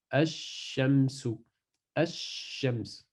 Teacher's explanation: Si la lettre shin vient après le L, on ne prononce pas le lem, donc elle disparaît, et le shin prend une shadda, et ça donne ash-shamsu, ash-shams, comme ça, ash-shams.